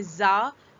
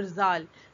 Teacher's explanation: زا میں سیٹی کی آواز ہے جبکہ زال میں سیٹی کی آواز نہیں ہے۔